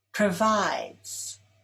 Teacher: Provides is stressed on the second syllable.